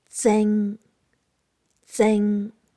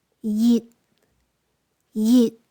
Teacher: Tones 6 and 9, low to mid-pitched.